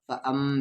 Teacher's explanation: تو یہاں پر غنہ ہوگا، میم پہ شد ہے